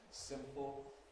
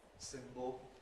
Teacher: in simple, the voicing is switched off for a minute, simple, but in the other one, the voicing continues.